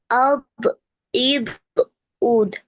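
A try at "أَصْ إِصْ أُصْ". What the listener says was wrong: তুমি আমার মনে হচ্ছিল দ বলে ফেলেছো, এই জন্য বললাম।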